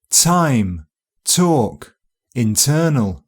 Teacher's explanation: In front of strong vowels, a little s can appear directly after the t as it's released. Ts, a process known as affrication, so time, talk, internal.